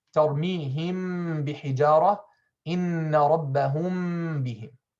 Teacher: we have to close the lips on the meme and open them on the ba while applying a long ghunna, a bit shorter than the longest ghunna of the idgham shafawi. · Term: ikhfa shafawi